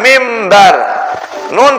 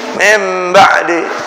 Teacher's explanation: ketemu ba Nun berubah menjadi suara mim